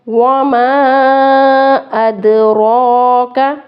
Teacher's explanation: میم الف اور پر مد ہے اس لیے اس کو زیادہ کھینچیں گے، مد والے حروف کو لمبا کر کے پڑھتے ہیں۔